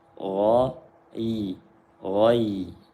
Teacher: Kemudian ada ya sukun setelah fathah. Ghin tebal, ya nipis.